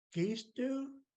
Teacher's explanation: this time our tone actually does go up a little bit at the end